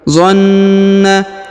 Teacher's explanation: Huruf Na ditahan dan ditekan karena berharokat tasdid.